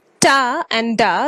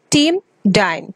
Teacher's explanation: these are alveolar sound because the tongue reach the alveolar ridge. Thus, words can be team, dine.